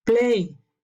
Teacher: Play termina con un diptongo, es voiced